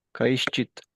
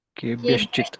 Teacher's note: When visarga is followed by cha, visarga will become sha.